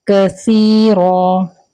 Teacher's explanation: سا جو ہم یہاں پر پڑھیں گے وہ نرمی سے پڑھیں گے، یعنی سین کی طرح سا نہیں پڑھیں گے